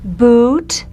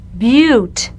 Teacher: And one more set of contrasting pairs, contrasting the structural vowel oo and the Y1. This is putting a little Y in front of the oo, making it a U